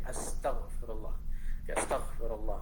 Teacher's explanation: Kemudian apabila perkataan yang terdiri daripada suku kata seperti astaghfirullah, jadi tekanan suara ditekankan pada suku kata kedua. · apabila perkataan seperti ini astaghfirullah, pada tag itu perlu ditekankan.